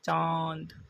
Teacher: ये मुंह से और नाक से दोनों से किया जाता है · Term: अनुनासिक